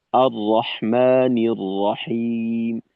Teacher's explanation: এই পুরো অংশে কিন্তু আমাদের ঠোট গোল করার কোন সুযোগ নেই আর রহমানির রাহিম ঠোটের ঠোটকে টান টান রেখে তারপর আমাদের এই